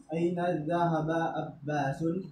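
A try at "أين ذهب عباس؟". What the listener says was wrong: Mumtaz.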